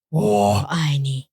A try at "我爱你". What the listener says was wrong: But that's not clear. That's not a clearly third tone.